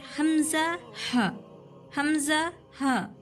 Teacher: जो हलक का नीचे हिस्सा है ना, थ्रोट से थोड़ा ऊपर, ठीक है, वहाँ से हमजा हा, हमजा हा, इस तरीके से आवाज़ आती है।